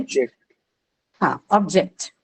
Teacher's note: First syllable, right? So this word, when used as, when it is used as a noun, it takes the stress on the first syllable.